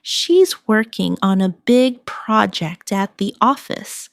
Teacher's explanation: Stress working, big project, and office.